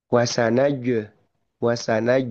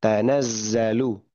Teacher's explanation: Secara keterlibatan bagian lidah pun beda sebetulnya. Huruf jim yang lidah tengah berbeda dengan huruf zai yang lidah ujung seperti itu.